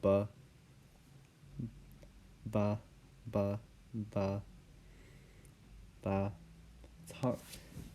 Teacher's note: it's a plosive in the same place as the v because it's the dental b